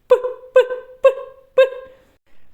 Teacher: пісенька не виходить його не можна Ні потягнути цей звук ні проспівати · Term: звук п